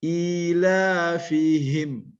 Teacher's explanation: ha besar di pangkal tenggorokan, ya, al halku, ya, di al halku ini tenggorokan, al halku di bawahnya itu disebut huruf h dan a.